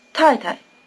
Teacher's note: the tones are falling neutral the weak short neutral tone has a low pitch